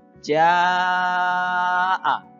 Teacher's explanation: panjangnya 5 sampai 6 harokat. Jadi harus dibaca panjang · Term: mad wajib muttasil